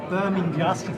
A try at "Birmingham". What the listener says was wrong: It's no, but you're missing the G. It's not a silent G.